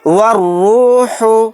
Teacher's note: والروح، یہاں پر دیکھیے الف اور لام کو سائلنٹ کر دیں گے، واو کو ڈائریکٹ را کے ساتھ ملا کر پڑھیں گے اور را کو موٹا یعنی پر بھی پڑھیں گے